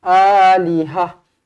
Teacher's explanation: Dunihi ali, a 2 harakat ada alif, lihah, H A H. Okey, ta marbutah ini bertukar menjadi huruf ha matilah. Alihah. Dan tak boleh berhenti dengan panjang juga, tak boleh alihah, tak boleh, kena alihah.